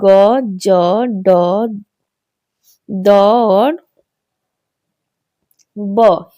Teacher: यह हमारे व्यंजन वर्ण के भेद हैं। जिनके उच्चारण में स्वर तंत्रियां कंपित होती है उसे घोष वर्ण कहते हैं